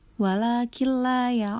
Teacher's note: idgham bilagunnah yang artinya memasukkan tanpa berdengung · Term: idgham bilagunah